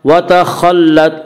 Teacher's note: خا کو پر پڑھیں گے۔ خا حروف مستعلیہ میں سے ہے۔